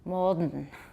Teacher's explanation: The alveolar nasal assimilated to the voiced velar stop